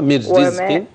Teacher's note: الراء في كلمة رزق ترقق